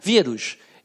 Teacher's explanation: Quando você fala vírus, é o rus? Não, é o vi. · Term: sílaba mais forte